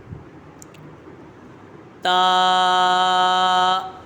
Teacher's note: تا، یہ حرف نطعیہ ہے، زبان کی نوک اور اوپر کے دانتوں کی جڑ سے ادا ہوتا ہے